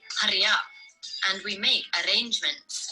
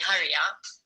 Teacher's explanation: The R's are rolled quite a lot, so they sound stronger and longer than in an English accent.